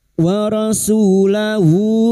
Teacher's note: Su dima diikuti wawu sukun 2 harokat mad tabi'i, 2 harokat kita panjangkan. Lahu hadamir yang berharokat panjang dan tidak bertemu hamzah namanya mad silah khosiro, 2 harokat kita panjangkan